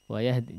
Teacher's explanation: Kalau mau berhenti di may yasha, terus lanjut di wayahdi, langsung aja wa-nya ya. Hamzahnya nggak usah diikutkan ya. Wayahdi, jadi nggak uwayahdi may yasha ya.